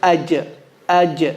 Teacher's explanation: Middle of the tongue touches the palate. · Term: jim